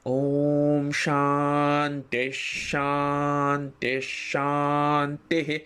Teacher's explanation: ওখানে কিন্তু আমাদের গলার স্বর নেমে যাচ্ছে ওম শান্তি শান্তি শান্তি শেষ যে শান্তিটি সেই শান্তির শেষ অংশে গলার স্বর উপরে উঠলো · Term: স্বরভেদ